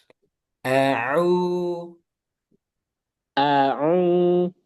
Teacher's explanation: nanti ainnya lebih tipiskan lagi dan enggak boleh masuk hidung.